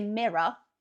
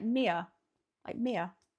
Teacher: it's almost like the R isn't actually pronounced, or it's very quick